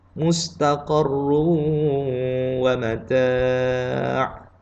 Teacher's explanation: kena baca dengan tebal pada huruf ra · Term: tafkhim tebal